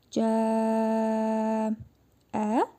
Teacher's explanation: Burada məddi muttasıl qaydasıdır. Cim hərfini dörd əlif miqdarı uzadırıq.